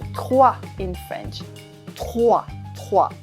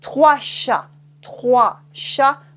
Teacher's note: you don't say the S except with la liaison.